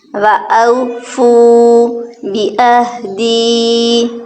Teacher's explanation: واو مدہ تو اس کو ہم نے ایک الف کے برابر لمبا کرنا ہے